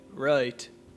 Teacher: if you had an irish accent you might start around the uh vowel saying right